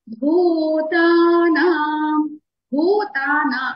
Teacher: భూ మహాప్రాణి ఒత్తి పలకాలి మనం. భూతానా, భూతానా అన్ని కూడా దీర్ఘాక్షరాలే, దీర్ఘంగానే పలుకుతాము.